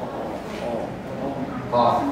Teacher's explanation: dia pangkal lidah bertemu dengan langit-langit